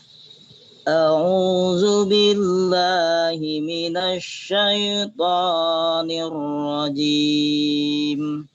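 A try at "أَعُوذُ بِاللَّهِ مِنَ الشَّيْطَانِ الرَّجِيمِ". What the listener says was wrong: Syai'nya tipisnya syai.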